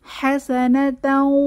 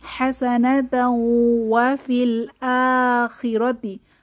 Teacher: এখানে ইদগাম উইথ গুন্নাহ সহ মিলিয়ে পড়ব।